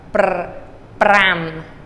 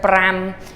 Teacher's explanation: This has to be a rolled R.